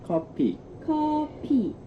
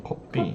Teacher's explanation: Change that F sound to the P sound because in Korean there's no F sound.